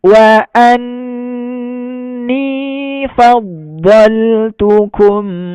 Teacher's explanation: jangan cepat-cepat, ditahan 2 harokat gunnah musyaddadah